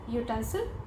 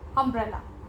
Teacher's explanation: दोनों ही वाक्य में जो शब्द है ब्लैंक स्पेस के बाद वो यू से शुरू हो रहा है और यू एक वोवेल है, लेकिन दोनों जगह यू का उच्चारण अलग है. पहले वाक्य में यू का उच्चारण य है, यूटेंसिल, और दूसरे वाक्य में यू का उच्चारण अ है, अम्ब्रेला